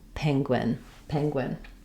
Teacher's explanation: Um, letters Gu U do something strange here where they have the G and the W sound. So, no vowel sound for that letter U, just a W